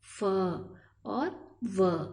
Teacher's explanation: ओष्ठ और दांत दोनों के योग से ये वर्ण उच्चारित होते हैं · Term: दंतोष्ठीय